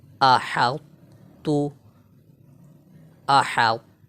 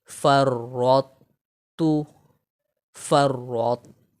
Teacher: طا کو موٹا پڑھیں گے تا کو باریک پڑھیں گے. طا کے موٹائی کو برقرار رکھتے ہوئے تا کو باریک پڑھیں گے اور طا میں ہم قلقلہ بھی نہیں کریں گے.